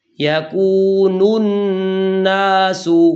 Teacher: نون کی پیش کی آواز ناک میں نہیں جانی چاہیے